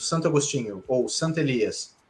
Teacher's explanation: a gente fala tudo junto Santo Agostinho ou Santa Elias o o quase desaparece e a gente pronuncia como uma palavra só